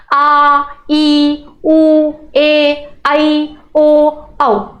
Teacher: इनके उच्चारण में दुगना समय लग रहा है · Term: दीर्घ स्वर